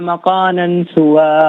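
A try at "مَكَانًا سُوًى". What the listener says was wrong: اچھا، مکانن میں کاف باریک ہے، مکانن، مقانن نہیں، مکانن سوا۔ جزاک اللہ خیر۔ السلام علیکم۔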